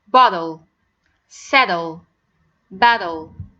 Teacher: we pronounce it the flap T like D but it's a very light T it's not a heavy D · the flap T when it comes between a vowel and the letter L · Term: flapped T